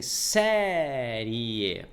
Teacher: O I é mais fraco que o E. Quando você pronuncia o I, ele sai com menos força expiratória. Quando você retira o ar do pulmão, você coloca mais força, mais entonação na letra E. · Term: ditongo crescente